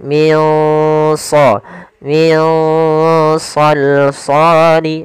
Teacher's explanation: pula cara membacanya adalah kita samarkan nunnya ke huruf Shad nah Shad termasuk huruf yang tebal dan huruf istila maka dia samarkannya agak ditebalkan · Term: Ikhfa